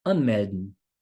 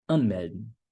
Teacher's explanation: Agora, uma dica bem interessante aqui de pronúncia, que é o seguinte. Quando você tem os verbos separáveis, e aí o verbo está ali no infinitivo, a sílaba tônica, ou seja, onde você vai dar ênfase, fica em cima do prefixo.